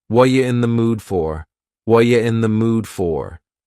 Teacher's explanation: What are you in the mood for? The word are is gone, and the word you has been reduced to ya. So when we link together, what and you, super fast. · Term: reduction